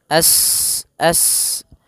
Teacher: sifat sofirnya sifat mengalirkan nafas atau berdesis seperti suara burung.